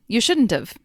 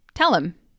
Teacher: The H's at the beginning of have and him will often get dropped. So you shouldn't have becomes you shouldn't have. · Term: elision of the H